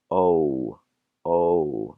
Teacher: Now this might sound more or less the same as the one before, but whereas that other letter was opening its sound O, this one is closing it. So it's starting out with a O and going to a U.